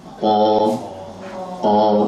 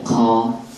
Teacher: enggak ada hembusan langsung o